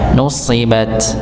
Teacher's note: shad ini ditebalkan dengan diangkatnya pangkal lidah